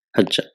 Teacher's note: the ain kalima loses its vowel sign and there is idgham, what is called assimilation